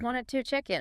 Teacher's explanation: the source highlights that reduction of to a schwa sound.